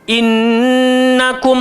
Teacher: atas nun ada sabdu wajibul gunnah